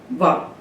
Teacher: वकार का उच्चारण स्थान हुआ दंत, ओष्ठम, दंत और ओष्ठ। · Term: दंतोष्ठम